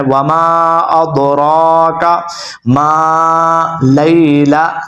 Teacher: را کو آپ نے کھڑا زبر ہے، اس کو لمبا کرنا ہے